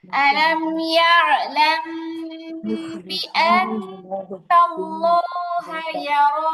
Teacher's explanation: মিম সাকিনের পরে বা আসছে মিম সাকিন ইকফা গুন্না হবে